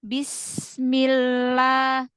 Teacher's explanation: maka rakhwahnya aliran suaranya lebih panjang bismillah kan bukan bismillah bismillah gitu bisa dipahami lebih panjang rokuahnya